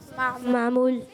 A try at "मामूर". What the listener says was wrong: मामूर, रे है आखिर में, क्या है?